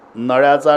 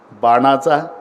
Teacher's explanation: नळ्याचा न उच्चार करायचा असेल तर मला दाताला जाऊन चिकटावं लागतं पण बाणाचा न असेल तर दाताशी संबंधच नाही टाळूला लागते